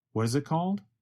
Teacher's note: What is becomes reduced to what is. The letter T in what changes to a sound closer to the letter D. And the word it goes by so fast that it becomes very reduced to just a vowel sound plus a very fast held T.